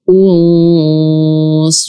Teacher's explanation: Jadi jangan kita baca wasulna wasulna. Kita tebalkan karena memang sod adalah huruf tebal. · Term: ikhfa